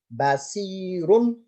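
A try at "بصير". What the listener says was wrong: Try to that was good. Just the sad was not as heavy as it could be. So try to say just the sad.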